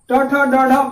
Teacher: मूर्धा वह स्थान होता है ऊपर वाला दांत के पीछे वाला जो भाग है, जहां पर जीभ का अगला हिस्सा सटता है, उसी को हम मूर्धा बोलते हैं। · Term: मूर्धन्य वर्ण